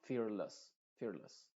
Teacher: no se dice fearless con la e muy clara sino con una sha